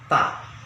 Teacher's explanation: Ta itu ujung lidah nempel pada gusi gigi depan atas, ya. Tempelin baru keluar angin. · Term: huruf ta